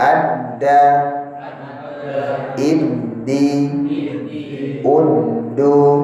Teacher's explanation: Ya, tanda panah itu, angin itu tertahan sudah di ujung lidah ketemu dengan tempat gusi atas